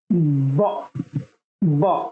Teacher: এখানে ঠোঁট লাগতেছে এবং কণ্ঠ লাগতেছে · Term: ভয়েস সাউন্ড